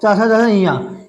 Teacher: जो चा वर्ग है, इनके उच्चारण स्थान में हमारी जीवा क्या, किसको स्पर्श करती है, तालु यानी तालव्य को स्पर्श करती है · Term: तालु या तालव्य